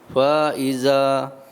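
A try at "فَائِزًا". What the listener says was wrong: Fa-nya pendek. Ya, kenapa antum panjang tadi karena ada alif kan? Tapi alifnya itu miliknya siapa? Hamzah. Dia sudah ada pasangannya dengan Hamzah. Sudah, jangan diambil, kasihan. Jadi fa-nya, enggak ada panjang.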